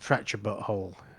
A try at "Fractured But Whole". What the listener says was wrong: Oh, you said too fast. It's fractured but whole. There's a pause there. Yeah. No, too fast. Too fast.